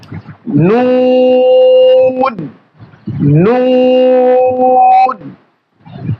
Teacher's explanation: এই হরফের মাখরাজ হচ্ছে জিহ্বার আগা তার বরাবর উপরে তালুর সঙ্গে লাগায়